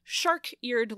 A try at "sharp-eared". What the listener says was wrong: No, sharp. Sharp with a P.